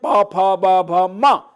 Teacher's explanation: last में nasal भी है और ओष्ठ स्थान, होठ से बोला जाता है